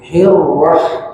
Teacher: ra bertasydid, maka ada sifat takrir pada huruf ra, getarkan